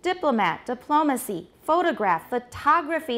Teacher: the stress has shifted to which syllable? The second, diplomat, diplomacy, photograph, photography, and the vowels change as well. Photograph, photography.